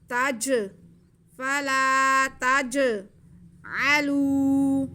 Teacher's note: فلا تجعلوا, تا پہ زبر ہے اور جیم ساکن ہے. جیم حروف کلکلا میں سے ہے تو جیم کی آواز کو ہم جنبش دے کے پڑھیں گے.